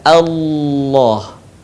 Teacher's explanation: Bukan Allah tapi Allah. Suaranya menebal dengan cara menutupkan bagian lidah kita ke langit-langit. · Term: lafaz Allah